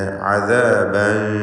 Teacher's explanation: തൻവീനും ശേഷം ഷീനുമാണ്. ഇഖ്ഫാ ഹഖീഖി നൽകി മറച്ചു മണിക്കണം തൻവീനിനെ.